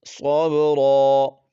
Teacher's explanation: بیر فصبر صاد با زبر صاب را دو زبر رن صبرا وقفا صبرا با پر قلقلہ کریں گے